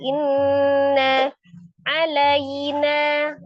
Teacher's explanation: Inna, ada nun tasdid, nun musaddadah ya, wajibul ghunnah, akmal matakun, paling sempurna 2-3 harakat, ditekan dan ditahan di suara yang dimasukkan ke rongga hidung.